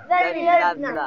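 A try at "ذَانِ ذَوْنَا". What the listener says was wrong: Jangan jadi na. Na di mana? Di gusi. Jadi kalau nggak bisa huruf dzal, latihan seharian insya Allah bisa.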